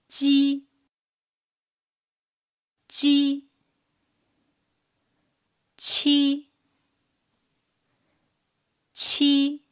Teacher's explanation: The surface of the tongue touches the hard palate when pronouncing ji and qi. While qi brings out a strong air flow, ji doesn't.